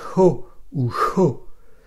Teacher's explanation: Elle se prononce ho ou cho, une aspiration rauque.